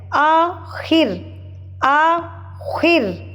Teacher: زیر ہے، تو اس کو ہم نے باریک پڑھنا ہے. آخر، آخر، خا موٹا ہو جائے گا، را باریک ہو جائے گا